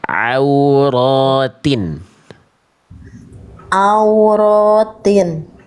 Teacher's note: makhraj huruf ain dari tengah tenggorokan